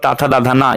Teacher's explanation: ये दंत से बोला जाता है